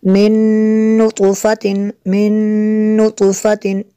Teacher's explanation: من نطفۃ، نون ساکن کے بعد نون ہے، یہاں پہ نون ساکن کے بعد حروف یر معلوم میں سے نون ہے، یہاں پہ بھی ادغام ہوگا، اس لیے یہاں پہ بھی غنہ کریں گے